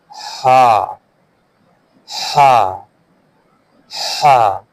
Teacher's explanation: The sound comes from the middle part of the throat.